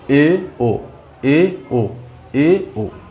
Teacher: अच्छा, अर्ध समृत में, समृत स्वर में क्या हुआ, मुंह लगभग बंद था, ठीक है। अर्ध समृत में मुंह लगभग आधा खुला रहेगा, मुंह आधा खुला रहेगा